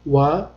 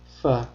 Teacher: vav harfini talaffuz qilishda lablarimiz bir-biriga tegadi. Fa harfini talaffuz qilishda esa tepa tishimiz pastki labimizga tegadi.